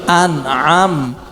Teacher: Nun sukunnya jelas bertemu dengan huruf Ain